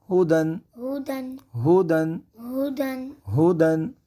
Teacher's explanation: ہودن۔ اب یہاں پہ ہا کی آواز کو حلق کے آخر والے حصے سے ادا کیا جائے گا جو سینہ کے قریب ہوتا ہے، یہاں سے ہا کی آواز ادا ہوگی۔